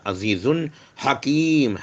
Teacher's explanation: واللہ عزیز حکیم، زے whistling sound سے پڑھا جائے گا، زبان کی نوک اوپر کے دونوں دانتوں کا اندرونی حصہ. عزیز حکیم، ہے کو حلق سے پڑھا جائے گا، اور میم کے دونوں پیش نکل کر اس پر جزم لگ جائیں گا، رک جائیں گے.